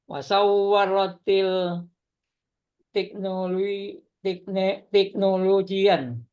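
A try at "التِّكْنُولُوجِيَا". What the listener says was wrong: ya, teknologi ya, enggak ditanwin. Wasawaratit teknologiya.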